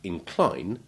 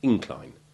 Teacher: the primary and secondary stresses are commonly exchanged between the syllables to distinguish the verb incline from the noun incline